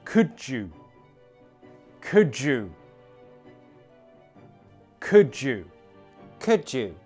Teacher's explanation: the words could you are separated with a d and a y sound. But with connected speech, we combine those into a j sound. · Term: Assimilation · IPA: /dʒ/